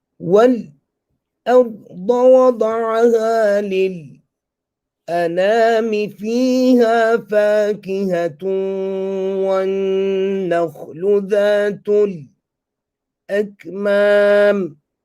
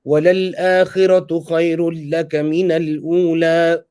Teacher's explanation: I did not break my breath in between each one. I just took a small pause. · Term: sakt